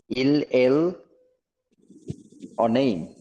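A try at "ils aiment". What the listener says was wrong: না না না, ইলেল এর এখানে তো আর অ নেই, এখানে তো লাস্ট থার্ড পারসন প্লুরাল, দুইটাই আছে শুধু ইল এম। জেম, ইলেল জেম। জেম, হ্যাঁ, জেম কেন? কারণ লিয়াজটা লিয়াজও হবে, হ্যাঁ, এই জন্য এরকম।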